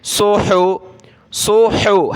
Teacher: صاد پیش سو، حا پیش حو، صوحو، صاد کو موٹا کیا، حا کو گلے سے نکالا